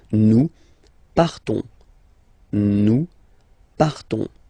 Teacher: you don't pronounce the S, you just have this on sound nasal.